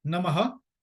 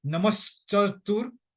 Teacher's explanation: when you combine a word which has got a visarg at the end with another word which is a hard consonant, cha, it's a hard consonant, then the visarg is replaced by the sibilant. Sibilant means sa.